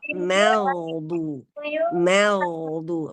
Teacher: Nah, sempurnakan juga pengucapan huruf mim pada kata al-maghdu. Ya, al-maghdu, maknya tipis, ma, kemudian dipengaruhi oleh huruf tebal gha